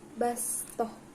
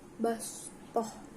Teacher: Kemudian pada lafadz fil khalqi bastah, bacaan bastah, di sini terdapat huruf sin di atas huruf sod dan membacanya dengan menggunakan huruf sin, yakni bastah, bukan menggunakan huruf sod